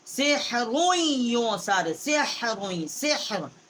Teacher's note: ہا جو ہے حروف حلقی ہے، وسط حلق سے اس کا مخرج ہے. را جو ہے اس کو ہم نے دو پیش ہے، ایک سیدھا ایک الٹا ہے.